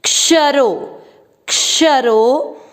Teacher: क्ष, श का अर्थ हुआ आधा क और श पूरा, तो इसमें क का उच्चारण भी आना है और श पे अधिक जोर देना है।